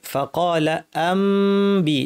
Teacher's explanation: মিমটা পড়ার সময় দুই ঠোঁট লাগিয়ে নাক থেকে গুন্নাটা লম্বা করে ইখফা করতে হবে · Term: ইকলাব